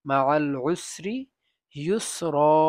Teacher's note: ওয়াকফ কালে দুটি জবর থাকলে একটি জবর পড়ে যাবে আর একটি জবর থাকবে এবং এক আলিফ লম্বা করে পড়তে হবে